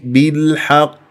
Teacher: واقف على قاف ساكنه مقلقله قلقله كبرى في اخر الكلام